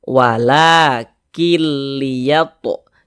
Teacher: cara membacanya itu dengan cara memasukkan kemudian tidak disertai dengan gunnah, tidak disertai dengan dengungan. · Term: idgham bila gunnah